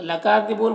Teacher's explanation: کاف میں کھڑا زبر ہے، یہ الف مدہ کی طرح ہوتا ہے تو اسے ایک الف کے برابر کھینچیں گے۔ یہاں پر وقف کی صورت میں مد عارض وقفی ہوگا تو اس طرح سے پڑھیں گے۔